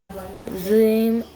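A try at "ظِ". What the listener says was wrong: That's better.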